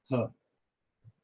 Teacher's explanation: तो ह को यहाँ पे रखा गया है क्योंकि उसमें वो ठोकर, हवा की ठोकर सॉफ्ट पैलेट में लगती हुई आती है ह, इस वजह से इसको यहाँ पर रखा गया है।